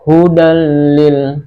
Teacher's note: tidak boleh didengungkan ya, karena ini bilaghunnah, dengan tanpa dengung · Nah, kemudian hudan ada tanwin berupa fathatain bertemu dengan huruf lam, maka hukum bacanya adalah idgham bila gunnah. Dibaca langsung dimasukkan hudal lil, tidak boleh didengungkan ya, karena ini bila gunnah dengan tanpa dengung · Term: idgham bilaghunnah